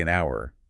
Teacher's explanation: Right, like we wouldn't say an hour, we say an hour because of that vowel sound at the beginning. Even though it's spelled with an H, it sounds like it starts with the vowel.